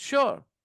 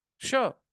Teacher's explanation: There is no ya sound in S-U-R-E.